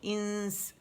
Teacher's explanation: right away غنہ کرتے ہوئے سین کے مخرج کے قریب جائیں گے، نون کو چھپاتے ہوئے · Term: اخفاء